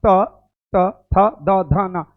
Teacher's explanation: दांत के पास आपका जीभ जा रहा है